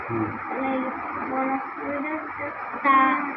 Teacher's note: জিহ্বার আগা সামনের উপরে দুই দাঁতের গোড়ার সঙ্গে লাগিয়ে